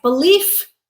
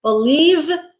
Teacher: unvoiced f was our noun, voiced v was our verb